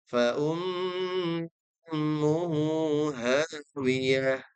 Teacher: Mim yang bertasydid harus didengungkan. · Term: dengungan